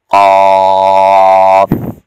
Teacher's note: زبان کی جڑ اس کوے کے ساتھ لگے گی، سانس بند ہو جاتی ہے تو یہ حرف ادا ہوتا ہے قاف